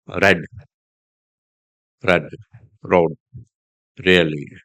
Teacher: Car is not pronounced. R is the beginning of a word is pronounced but softer than the American R. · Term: British R